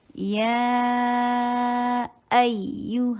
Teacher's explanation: یا اس میں ی کی ساؤنڈ نہ آئے. یا ایو حمزہ کو شدت کے ساتھ ادا کر کے یا کو سافٹلی ادا کیجئے، اور یا کے اوپر نبر بھی کیا جائے گا.